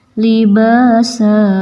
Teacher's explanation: Liba ada alif mad tabi'i panjang 2 harokat, libasa. Ini mad iwad.